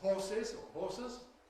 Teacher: Some people add [ɪ]. Some people add [ə], doesn’t matter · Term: extra vowel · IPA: [ˈhɔːsɪz] or [ˈhɔːsəz]